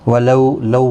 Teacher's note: ولو لو واؤلین ہے، تھوڑا نرمی کے ساتھ آدھے الف کی مقدار کے برابر کھینچیں گے